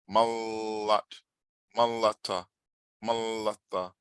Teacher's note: I want you to get off that ma as fast as you can. Mal, get off the ma quick and then just hang and sing the L, sing the la.